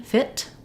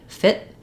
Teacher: sound so if I'm just saying fit by itself I can say it with a release te fit or I can say it with a stopped unrelease tea fit in which case it's going to sound short and then